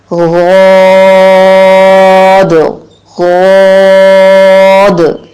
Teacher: ऊपर वाली दाढ़ों के साथ जुबान के मोटे किनारे, यानी दाढ़ों के सामने जो जुबान का हिस्सा आता है, उन जगहों से उसको टच करना। पहले टच करके देखिए, जुबान फैल सी जाएगी और आगे से कहीं से नहीं लगेगी, दाएं बाएं से, अतराफ नहीं।